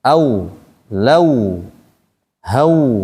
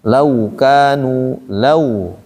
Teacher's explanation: fathah bertemu wau sukun dibaca dengan cara memonyongkan mulut saat masuk ke huruf wau. Jadi saat kita bunyi au maka mulut dititanya ke depan kan dia wau kan.